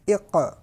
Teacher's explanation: قاف حروف مستعلیہ میں سے ہونے کی وجہ سے پر پڑھا جائے گا۔ اور قاف حروف قلقلہ میں سے بھی ہے، اور ہم نے پڑھا کہ جب حروف قلقلہ ساکن ہو تو اس میں قلقلہ خوب ظاہر ہوگا۔